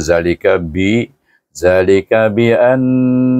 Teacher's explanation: An itu hendaklah didengungkan dengan hukum wajibul ghunah